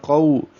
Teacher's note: قو قاف پر ہے واو لین ہے ہونٹوں کی گولائی سے ادا کریں گے